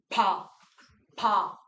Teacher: 아예 막은 자리를 일시에 터뜨린다. 한 번에 터뜨린다. 이런 걸 뭐라 그러냐면 파열음 터뜨리는 소리라고 얘기합니다. 비읍은 터뜨리는 소리입니다.